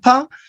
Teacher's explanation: the sound pa is bilabial, is plosive